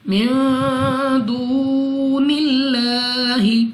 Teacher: اس کے بعد لام آف اللہ سے پہلے حرف کے نیچے زیر ہے، تو اس لام آف اللہ کو باریک پڑھیں گے، یعنی اپنی آواز کو نیچے گرا کر